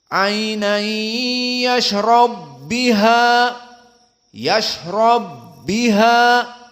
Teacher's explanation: domahnya dihilangkan menjadi tasdid, dimasukkan kepada ba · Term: idgham al-kabir